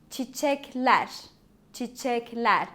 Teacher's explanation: Ler is the plural suffix. So the stress is on ler.